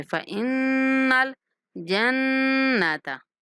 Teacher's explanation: دونوں نون کے اوپر غنہ کریں گے ، فإن الجنة، پہلے نون پر بھی دوسرے نون پر بھی،